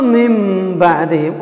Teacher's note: جب نون ساکن کے اوپر چھوٹا سا میم آئے تو نون کی آواز ہم میم سے بدلیں گے